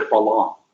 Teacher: Some that are not so good with English, they'll switch it to falong with an L.